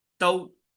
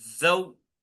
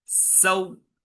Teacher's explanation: जल्दी पढ़ेंगे, नर्म आवाज से पढ़ेंगे, और वाव की साउंड पूरी अदा होगी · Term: हरूफ लीन